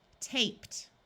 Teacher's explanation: Ed also sounds like the letter T after the sound of P.